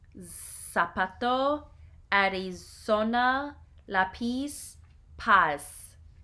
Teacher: Z. In Spanish America, the Z has the sound of S. It is never pronounced like the English Z of buzz.